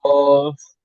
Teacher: কফকে মুখ গোল করে বলতে হবে